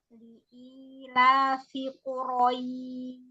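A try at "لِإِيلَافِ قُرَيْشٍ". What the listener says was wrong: huruf ro-nya jangan maju mulutnya. Kuro. Wah, untuk huruf ro nggak maju mulutnya ya. Dia alisan. Jadi nggak bibir, nggak ikut-ikutan gerak ya Boleh diulang?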